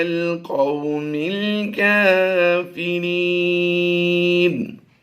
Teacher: نون کی زبر جو ہے وقف میں ہم نے جزم سے بدل دی اور را یا زر ری. یا مدہ کے بعد سکون عارضی ہے تو ہم نے مد عارض کرتے ہوئے اسے لمبا کرنا ہے